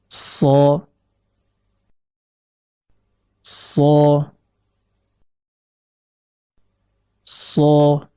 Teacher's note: Huruf shad keluar dari pertemuan antara ujung lidah dengan bagian dalam gigi seri bawah.